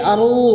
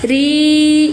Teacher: Ro yang pertama tebal, ro yang kedua tipis atau tarkik.